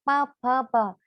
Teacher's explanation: प जैसे ही बोलते हैं तो ओंठ क्या होते हैं, दोनों एक दूसरे में, ओंठ जो होते हैं दोनों एक दूसरे में चिपक के निकलता है ना, प फ प। तो वो ओष्ठ से हो गया।